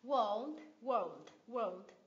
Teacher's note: Từ world thì mình sẽ cong lưỡi âm L lên